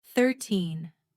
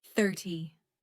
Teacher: For example, 13 has the stress at the end, 13, but 30 has the stress at the beginning, 30. These small details make a big difference in clear communication.